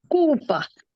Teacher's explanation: in Portuguese, the L in the middle is usually rolled. It's a little different from when the L is at the beginning of the letter of the word.